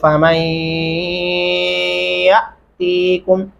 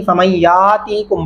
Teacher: الف کے اوپر جزم آیا تو ہم نے اسے جھٹکے سے پڑھنا ہے. یہ بڑے سارے لوگوں کو پتہ نہیں فمن یاتیکم پڑھتے، یاتیکم پڑھنا غلط ہے.